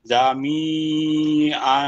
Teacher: ওয়াকফের অবস্থায় দুই জবর আছে, এক জবর বাদ দিতে হবে, এক জবরকে লম্বা করে পড়তে হবে।